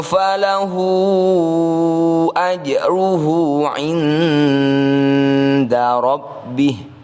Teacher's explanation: Ini adalah bacaan mad silah tawilah, disebut tawilah karena hu ini harus kita baca panjang sekali, yaitu 5 sampai 6 harokat.